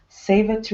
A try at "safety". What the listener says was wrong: Instead of safety, safa, it's safety. The E is silent, no E sound.